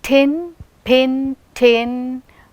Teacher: in pin, it is receiving stress. That is why it is said with aspiration.